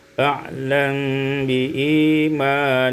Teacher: iskanul mim ma'al ikhfa, disukunkan mim dengan cara ikhfa